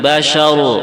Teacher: kalimat basar rnya tafkim tebal kemudian syinnya juga tebal kemudian kalimat basar ini pendek bukan basar bukan gituam nya panjang